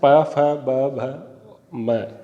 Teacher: तो इनके ये जो 5 वर्ण हैं, इनका जब हम बोलेंगे, इनका उच्चारण करेंगे तो बिना दोनों होठों को चिपकाए हम इनका उच्चारण नहीं कर सकते